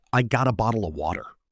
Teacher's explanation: Your tongue just taps the roof of your mouth quickly instead of making a sharp hard T. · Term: flap T